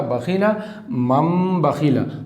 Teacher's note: تو غنہ اور اخفا کے ساتھ پڑھیں گے، اسی کو اقلاب کہتے ہیں